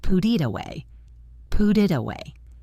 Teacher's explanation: when a T is between two vowel sounds, it becomes what we call a flap T, which sounds very much like a quick, soft D. · Put ends with a T and starts with an I, so we link them, and the T falls between vowels. It becomes pudit away.